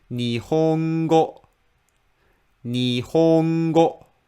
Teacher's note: you read the first mora low, に, に, and the rest of the mora with flat middle pitch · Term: flat word